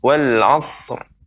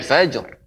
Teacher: Bisa kita pantulkan karena jim huruf qalqalah.